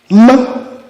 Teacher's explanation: This is a bilabial nasal.